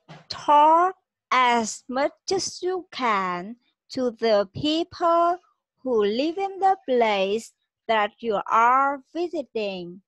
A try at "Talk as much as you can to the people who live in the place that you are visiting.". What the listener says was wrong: Chỉ có cách là trầm giọng xuống. Talk as much as you can to the people who live in the place that you are visiting. Những cái từ mà âm nặng, dấu nặng và dấu huyền xuống thì chị chưa thể hiện được.